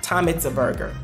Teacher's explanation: Tom et burger, eats sont les mots qui sont vraiment accentués.